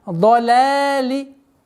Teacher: Лям мягкая. После лям в размере двух огласовок фатха удлиняем.